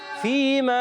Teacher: فا کا مخرج اوپر والے دانتوں کے کنارے، نیچے والے ہونٹ کا تر حصہ